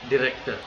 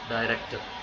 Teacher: So Americans are using the short vowel, but Britishers using the long vowel.